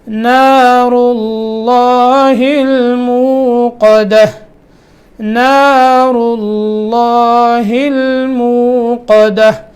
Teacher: اس سے پیچھے را کے اوپر پیش آ گئی ہے، تو جب لفظ اللہ سے پہلے زبر اور پیش ہوتی ہے تو لفظ اللہ موٹا کر کے پڑھا جاتا ہے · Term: لفظ جلالہ